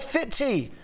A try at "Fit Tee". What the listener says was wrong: you might want to enunciate and have a pause there.